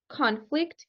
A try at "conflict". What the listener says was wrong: Ooh, not con. This one is reduced, so in here it sounds like a schwa. Conflict. Conflict.